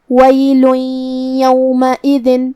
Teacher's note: یا حروف الادغام بغنہ میں سے ہے اور ادغام کا معنی ہے حرف کو حرف میں داخل کرنا، تو ہم یہ تنوین کو یا میں ملا کے غنہ اور تشدید کے ساتھ یہ حکم کو ادا کریں گے